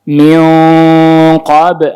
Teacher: tetap harus ada suara isti'la'nya di belakang lidah, pangkal lidah. Jadi bukan cuman ming, bukan begitu. · Dinaikin pangkal lidahnya karena di depannya qaf. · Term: ikhfa